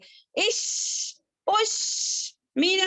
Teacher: सी space रहती है वहां पर शीन में, ठीक है। और ये तफस्सी लेटर है, इसमें हमारी आवाज जो है स्प्रेड होती है , जैसे कि परफ्यूम जब स्प्रे करते हैं तो आवाज किस · शीन जो है अच्छे से तालू को टच नहीं करता